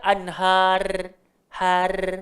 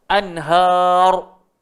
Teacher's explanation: Bila kita berhenti dekat anhar, ra tu automatik jadi tebal sebab sebelum dia baris atas. So jangan baca anhar, har, itu nipis.